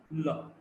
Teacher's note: And there's one lateral la. The tongue is placed laterally, and when the air flows from both the sides, we've got the lateral approximant.